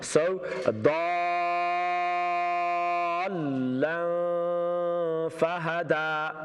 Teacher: Yeah, you know when you move on from dad to the lam, because lam's got tashdid, double letter, double sound, make sure your voice is more high. The pitch of your voice is more high in the letter lam.